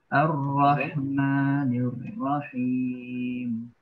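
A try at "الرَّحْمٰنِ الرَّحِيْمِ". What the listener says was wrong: Hati-hati, ninya tipiskan. Ar-Rahmanir Rahim. Ni tipiskan dulu. Nirra. Nirrahim. Ar-Rahman.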